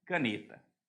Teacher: a palavra caneta a sílaba tônica é o ne